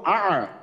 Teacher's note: হামজা থেকে শুরু করে আইনে গিয়া থামবো, হামজা হলকের শুরু থেকে হামজা উচ্চারণ করে আইনে গিয়া থামবো। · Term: হামজা আইন